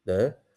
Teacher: the White Hmong cognate would be dev, so with a rising tone.